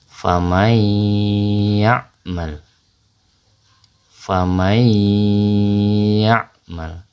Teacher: Jadi nun sukun bertemu dengan huruf ya itu dengan suara gunnah ya atau dengung. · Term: idgham bi gunnah